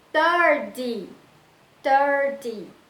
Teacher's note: 30, eu já não coloco força no final, eu coloco força no começo. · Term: stressed syllable